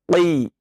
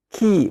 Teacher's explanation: Walaupun dia kasrah sekalipun tetap dibaca dengan tebal. Qi. Bukan ki, bukan, tapi qi. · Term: qaf